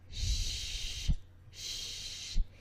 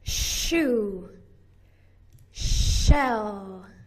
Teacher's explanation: This sound is made by pushing the middle of your tongue up towards the roof of your mouth and pushing air out. Your voice box is turned off. Shh, shh. If you think back to when we made the S sound, we did that with the very tip of the tongue to the alveolar ridge.